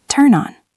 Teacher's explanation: We take the N from turn and stick it to on, so it sounds like turn on.